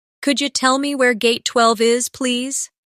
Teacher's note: In natural speech, could you sounds like could ya.